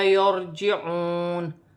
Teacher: را ساکن سے پہلے زبر ہے تو را موٹی پڑھی جائے گی